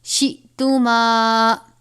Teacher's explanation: حمزہ ساکنہ ہو تو جھٹکا دے کر پڑھتے ہیں